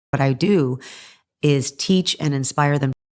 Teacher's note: She flaps the T in what before I, and what I sounds like what I. Notice also how fast she says what I as opposed to do, which she elongates and stresses on. · What I do, very connected speech here. She flaps the T in what before I, and what I sounds like what I.